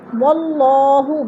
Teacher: اللہ سے پہلے لفظ وہ کے اوپر زبر ہے تو اللہ کو پر کر کے پڑھیں گے